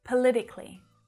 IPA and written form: pə -'lɪ -tɪ -kli (Politically)